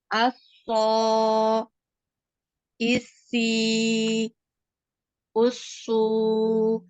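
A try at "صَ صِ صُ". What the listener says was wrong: jadi ini menebalkan masih di ini ya. So masih dibulatkan ya. Mulutnya masih dibulatkan. Nah, nanti belajar dinaikkan pangkal lidah.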